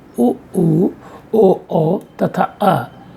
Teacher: इन स्वरों के उच्चारण में जिह्वा का पश्च भाग इतना ऊपर उठ जाता है कि उससे और ऊपर उठने पर इनका उच्चारण नहीं हो सकता। जिह्वा के पश्च भाग की क्रियाशीलता से उच्चरित होने के कारण ही इन्हें अग्रस्वर कहा जाता है। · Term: पश्च स्वर